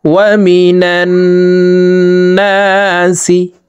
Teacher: عظيم ولهم عذاب عظيم ওয়াও জবর ওয়া মিম জের মি নুন নুন জবর নান ওয়াজিব গুন্নাহ হরকতের বামে নুনে মিমে তাসদিদ হইলে সর্ব অবস্থায় নাকের বাসি থেকে গুন্নাহ করিয়া পড়িতে হয়। তো এই নুন তাসদিদওয়ালা নুনের সাথে নাকের বাসি থেকে 3 সেকেন্ড পরিমাণ গুন্নাহ করে ধরে রাখবো।